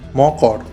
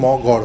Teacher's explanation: ক কিন্তু একটা অঘোষ ধ্বনি, তাহলে এই অঘোষ ধ্বনি ঘোষ ধ্বনিতে পরিণত হচ্ছে, অর্থাৎ গয়ে পরিণত হচ্ছে। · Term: ঘোষী ভবন